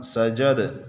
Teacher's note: سجد وقفاً، سجد کلمے کے آخری حرف پر پڑا زبر ہے، وقف میں گرا دیں گے، کلمے کا آخری حرف ساکن ہو جائے گا۔ دال حروف قلقلہ میں سے ہے، وقف میں ساکن ہے، اس پر قلقلہ کیا۔